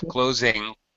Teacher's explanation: Don't drop your tongue. Your tongue is up, closing. You've got your tongue up there high, blocking air for the ing sound. Don't drop it suddenly, because if you do, you're going to make a K sound, and it's going to sound like closing.